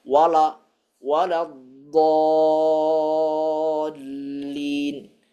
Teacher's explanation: Kemudian huruf lam pada akhir surat Al-Fatihah itu sendiri, kita atau sebagian orang sering membaca wala dallin, ya. Maka dia menebalkan huruf lam padahal seharusnya tipis.